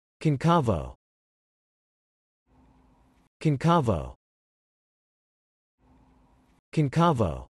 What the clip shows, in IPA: kɒnˈkeɪ voʊ